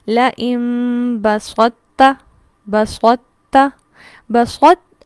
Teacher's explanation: تو کے مخرج پر جب زبان لگے گی تو جڑ سے اٹھے گی، کیونکہ یہ حروف مستعلیہ میں سے ہے، اور پھر اس کے ساتھ ہی تا کو باریکی سے ادا کیا جائے گا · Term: ادغام ناقص